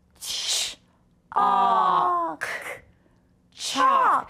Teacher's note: Do you see how that L is actually part of the vowel in this word? Because it helps make the ah sound. That's why we don't hear it. That's why the L is written in red.